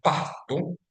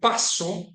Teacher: is pronounced with the aspiration, pasto, while the word paso, meaning step, is pronounced with the true S sound